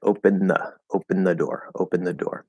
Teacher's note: that dental d is a replacement that we just interpret as a th